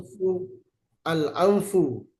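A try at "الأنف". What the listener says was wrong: Nggak usah diikhfakan, langsung aja an gitu. Iya, al anfu, anfu.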